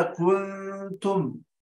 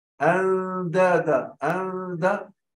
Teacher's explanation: لكن في كنتم أندادا أندا مرققة الغنة